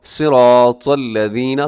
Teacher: طا کو اپنے موٹا پڑھنا ہے، صاد کو بھی موٹا پڑھنا ہے